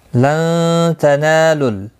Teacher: نون ساکن کے بعد حروف اخفا کا تا آیا ہے، اخفا حقیقی ہوگا، غنہ کے ساتھ پڑھیں گے. نہ الف مدہ ہے، ایک الف کی مقدار کے برابر کھینچ کر پڑھیں گے.